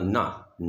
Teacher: तवर्ग का पांचवा वर्ण ना है, ये भी अनुनासिक में आता है